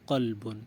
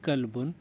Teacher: مثلا قرآن کریم کا ایک لفظ ہے قلب، قاف، موٹے والے قاف سے قلب، اس کا معنی ہے دل، اور اگر اسی لفظ کو آپ قلب کہیں، یعنی موٹے قاف کو موٹے کی بجائے آپ نے باریک پڑھ لیا